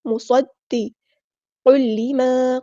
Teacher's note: صاد ہمارا heavy letter ہے، پورا ادا کریں گے، حروف صفیریہ میں سے اور سٹی بھی آئے گی